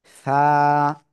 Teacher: জিহ্বার আগা সামনের উপরে দুই দাঁতের আগার সঙ্গে লাগিয়ে হালকা বাতাস বের করব বের করে মাত্র এক আলিফটা নিয়ে করে আমরা এই অক্ষরটা উচ্চারণ · হালকা বাতাস বের হবে কিন্তু বাতাস বের না হলে কিন্তু এই অক্ষরটা সঠিক হবে না